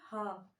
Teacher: ह का उच्चारण स्थान होता है हमारे कंठ के भीतर, इसका उच्चारण करिए ह, यानी इसमें हमारी जो वायु है वो कंठ के भीतर रह जाती है।